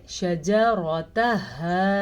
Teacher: شجرتها، را کو پر پڑھنا ہے کیونکہ را پہ زبر ہے. ہا کو اس طریقے سے پڑھنا ہے کہ گلے کے آخری حصے سے آپ نے نکالنا ہے